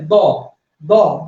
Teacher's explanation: দ উচ্চারণ করতে বাতাস খুবই অল্প বের হয় বা হাতে লাগে না। যদি উচ্চারণ করেন ধ, ধ উচ্চারণ করে দেখেন আপনার হাতে এসে বাতাস আঘাত করবে।